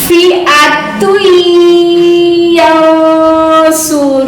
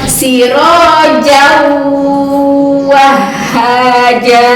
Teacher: Idgham yang harus disertai dengan gunnah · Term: idgham bigunnah